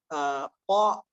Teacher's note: சுகூன் செய்யும் பொழுது இரண்டு உறுப்புகள் சேர்கிறது இப்படி ஹரக்கத்தை மொழிவதாக இருந்தால் அப்படி சேர்ந்த உறுப்புகள் பிரிய வேண்டும் பா என்று சொல்லும்பொழுது பட்டு அது திறந்து கொள்கிறது